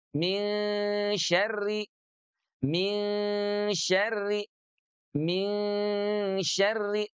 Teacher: Tengah lidah dengan langit-langit ya. Maka nun yang tadinya di ujung lidah sekarang bergerak ke tengah lidah. Min syarri, min syarri, min syarri, tidak min syarri, tidak min syarri, tidak min syarri, tidak juga min syarri, tapi di tengah lidahnya. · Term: ikhfa